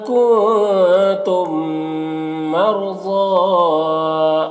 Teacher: میم ساکن کے بعد یہاں پر میم ہے تو یہاں پر ادغام شفوی ہوگا، غنہ کے ساتھ میں اسے پڑھیں گے